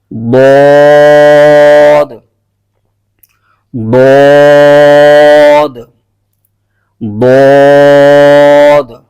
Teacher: जुबान की जो करवट है य साइड है यह उठकर ऊपर की दानों की जड़ को लगेगी तो वहां से यह एक हर्फ अदा होता है इसको हर्फ हा फिया कहते हैं और इसको यूं पढ़ेंगे द · اس سے اگلا جو مخرج ہے، زبان کی کروٹ اور اوپر کی داڑھوں کی جڑ سے۔ زبان کی جو کروٹ ہے، یہ سائیڈ ہے، یہ اٹھ کر اوپر کی داڑھوں کی جڑ کو لگے گی، تو وہاں سے یہ ایک حرف ادا ہوتا ہے، اس کو حرف حافیہ کہتے ہیں، اور اس کو یوں پڑھیں گے، ضاد، ضاد، ضاد۔